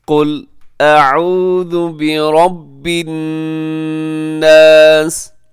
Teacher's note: اعوذ اعوذ، آگے برب الناس، برب میں را پر پڑھا جائے گا کیونکہ را کے اوپر حرکت ہے، اور آخر میں الناس کے اندر نون مشدد ہے، تو وہاں پہ غنہ کیجیے گا